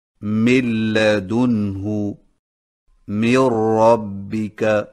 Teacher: سامعین کرام، جب نون ساکن یا نون تنوین کے بعد لام یا را آ جائے تو ادائیگی کا طریقہ یہ ہے کہ نون کو اگلے حرف میں ملا کر دونوں کو ایک ساتھ مشدد پڑھ کر نون کی آواز کو ختم کر دیں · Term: ادغام بلا غنہ